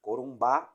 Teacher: mais força mais intensidade na pronúncia na última sílaba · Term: oxítonas